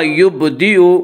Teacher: یبدی با میں قلقلہ ہوگا، با حروف قلقلہ میں سے ہے۔